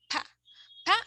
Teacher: Pa is bilabial, so the articulators involved are the lips, the upper lips and the lower lip